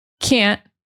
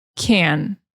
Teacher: So even though I didn't change the vowel sound, one is a stop T and one is not. The stop T is this abrupt cutting off of air, cutting off of the air.